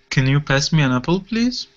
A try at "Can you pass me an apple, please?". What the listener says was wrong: There you go. Good. Good. Nice job.